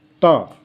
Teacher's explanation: और इसके बाद में चूँकि ये दंत से बोले जाते हैं, जैसे अभी आप बोलें ता, तो आपने देखा है कि जीभ जो है दांतों से टच हुई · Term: दंत व्यंजन